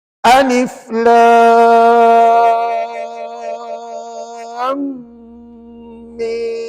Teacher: kena dengung kat sini dua harakat kemudian baru sebut mim enam harakat jadi 6 du en total 6 2 EN 14 harakat satu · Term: idram syafawi